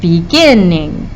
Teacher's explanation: The gin is where we really put that emphasis.